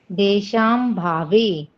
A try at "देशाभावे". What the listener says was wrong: हाँ, और देशाम भावे को अगर आप पढ़ रहे हो तो थोड़ा सा यहाँ पे गलत होता हो सकता है। हो सकता है क्या हो ही रहा है, तो आपको देशाम नहीं पढ़ना है, देशा म भावे। मत पढ़ो, देशा मत पढ़ो, देशा म भावे। इसको देशाम पढ़ोगे ना तो देशाम में तो पूरा ही अलग हो जा रहा है, एसाम होता है, फिर अभावे हो सकता है, ऐसा पढ़ सकते हो आप इसको।